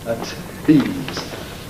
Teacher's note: Now, a tease has full aspiration of the T